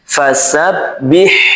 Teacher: ketika kita mengucapkan ha sukun di sini pastikan udaranya mengalir. Fasabbih. Nah. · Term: rakhawa